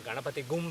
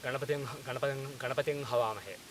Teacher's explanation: So you think that you are going to say Ganapating Gavamahe, but at the last second after saying Ganapating, when you are about to say G, you drop G and you say H instead. So you get Ganapating Havamahe.